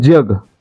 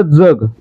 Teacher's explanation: जग या शब्दाचा उच्चार आहे तो तालव्य आणि दंत तालव्य दोन्ही प्रकारे होतो